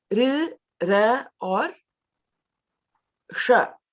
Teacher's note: The ri, the ra, and the sha are the murdhanyas, using the roof of the mouth.